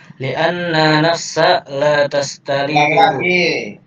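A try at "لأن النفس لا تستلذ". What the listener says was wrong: Nunnya ada tasdidnya. Li'annan nafsa.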